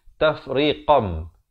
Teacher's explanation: Asalnya tafriqan, tapi datang ba ditukarkan daripada bunyi nun kepada bunyi mim, daripada tafriqan jadi tafriqam. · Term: hukum iqlab